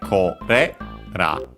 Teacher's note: Actually, no, it's actually accented. It becomes accented on the re.